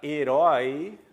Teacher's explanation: na palavra herói, a sílaba tônica é a última, oi, que eu vou colocar.